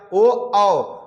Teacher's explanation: जो ओ और औ है वो ओष्ठ और कंठ दोनों से बोले जाएंगे, ओ औ है जो कंठ और ओष्ठ दोनों से बोले जाएंगे, इसीलिए इसे कंठोष्ठ बोलते हैं।